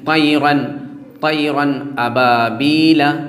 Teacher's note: تو تنوین کے بعد حمزہ آ گیا، اس کا مطلب یہ ہے کہ اب اس کے نون کو ہم ظاہر کر دیں گے اور بلا غنہ کے پڑھیں گے